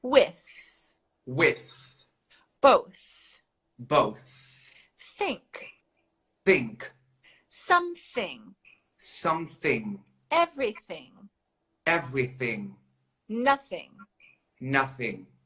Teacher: the blown th is without your vocal cords